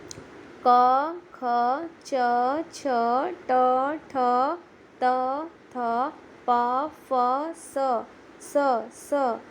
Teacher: જે વ્યંજનોનો ઉચ્ચાર કર્યા પછી રણકો કે ઘેરો અવાજ સંભળાતો નથી તેને અઘોષ ધ્વનિ કહે છે. જેમ કે ક, ખ, ચ, છ, ટ, ઠ, ત, થ, પ, ફ, સ આ અઘોષ ધ્વનિઓ છે.